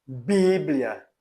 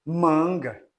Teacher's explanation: são os dois lábios se juntando né o contato dos dois lábios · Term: bilabiais